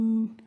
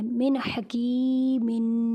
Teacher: نون ساکن کے بعد حا حروف ہلکی میں سے آ گیا، اس لیے یہاں پر غنہ نہیں ہوگا، اور یہاں پر یا مد بھی ہو رہا ہے اور تنوین بھی ہو رہا ہے، من حکیمن۔